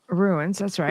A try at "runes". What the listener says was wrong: Yeah, no, not ruins. It's runes, like the rune stones. Like symbols. Okay, it sounded like ruins both times.